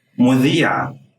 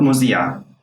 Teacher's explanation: zell in standard arabic is pronounced like a voiced dh sound